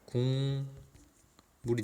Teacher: 기역이 이응으로 바뀐 이유는 그 뒤에 있는 미음 때문에 그런 거죠. · 결국 여기서 기역이 입력형이고 피동화음이죠. 즉 기역이 뭘로 바뀌었습니까? 이응으로 바뀌었잖아요. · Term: 비음화